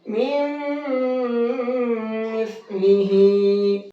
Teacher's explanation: اس نون کو ختم کر دیں گے، کیونکہ اس کو ہم نے مکس کر دیا میم کے اندر، اور اس میم کو اس میم کے ساتھ میں ملا کر کے پڑھیں گے اور غنہ بھی کریں گے.